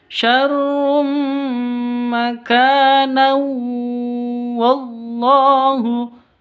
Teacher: Tanwin bertemu dengan wawu. Karena kita lanjut maka ada tanwin bertemu dengan wawu. Cara bacanya masuk ke wawu disertai dengung 2 ketuk. Idgham bigun.